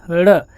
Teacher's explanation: जो हमारी जीभ होती है, जिह्वा, वो ऊपर उठती है, झटके से तालू को छूकर नीचे गिर जाती है · ढ़ है आपको विश्वास नहीं तो आप बोल के देखिए ड़ जीव आपकी झटके से ऊपर जा रही है तुरंत नीचे झटके से गिर जा रही है इसलिए इसको उत्क्षिप्त कहते हैं इसके अंदर दो गुण है ड